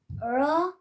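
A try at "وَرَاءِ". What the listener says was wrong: قبل الراء شوفي أيوة ليش تقطع الواو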